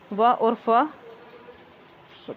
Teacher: दंत ओष्ठ ध्वनि व और फ